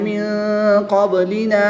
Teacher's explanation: نون ساکن کے بعد قاف حروف اخفا میں سے ہے تو یہاں پر بھی اخفا کریں گے یعنی یہاں پر بھی غنہ زمانی کر کے پڑھیں گے